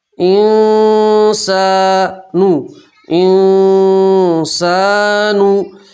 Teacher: نون ساکن کی آواز کو آپ ناک میں چھپا کر گننا کے ساتھ پڑھیں گے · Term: نون ساکن کا اکفا